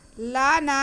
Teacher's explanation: قالوا ادعوا لنا، لام پہ زبر، نون پہ زبر اور ساتھ میں الف، تو یہ الف مدہ ہے، ہم نا کی آواز کو کھینچیں گے۔